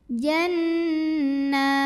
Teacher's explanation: Sanudkhiluhum Lalu ada gunnah musyaddadah karena nun bertasydid. Cara bacanya dengung, bunyi n-nya tahan kurang lebih 2 harokat.